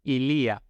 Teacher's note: illi el pronombre posesivo es ilía con la i en la con el acento en la segunda vocal no es Ilia como el presidente aclaró por para que no